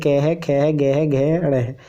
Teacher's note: क वर्ग के जितने भी व्यंजन हैं, यानी क है, ख है, ग है, घ है, ण है, ये सब इनका उच्चारण स्थान क्या है, कंठ्य है